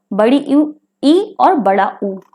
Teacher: मुंह हमारा पूरा नहीं खुलता है, कम खुलता है, तो हम उन्हें संवृत्त स्वर कहते हैं। ये हमारे दो हैं संख्या में, बड़ी ई और बड़ा ऊ।